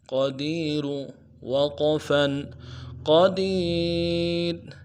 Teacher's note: شیء قدیر، قاف کو موٹا کریں گے، دال کو یا کے ساتھ ملانا ہے، یا مدہ ہے ایک الف دال میں کھینچیں گے اور را کو موٹا ادا کریں گے۔ وقف کی صورت میں را کو باریک پڑھیں گے اور جزم کے ساتھ پڑھیں گے۔